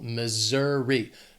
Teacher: This state has 3 syllables and the stress is on that 2nd syllable. Missouri. That S is gonna have more of that Z sound, Missouri.